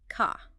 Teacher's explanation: The R is often only pronounced before a vowel sound. So car sounds more like ka. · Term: non-rhotic